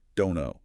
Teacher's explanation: Well, the source points out the reduction of don't know. First, that final T sound in don't is almost always dropped or unreleased when it comes before a consonant sound like the N in know.